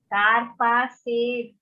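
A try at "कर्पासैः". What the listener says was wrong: Nahi, not bihi.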